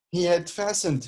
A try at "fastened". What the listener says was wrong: this word is fasten, not fasten. The T is silent.